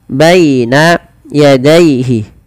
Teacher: Lafal baina dan daihi ini kedua-duanya dibaca dengan bacaan lin. Yaitu dengan melembutkan bunyi suara ya yang dilembutkan.